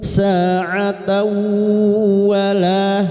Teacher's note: ta marbuta dengan fathah tanwin bertemu wau, idgham bi ghunnah, masukkan wau dan senandung tiga harakat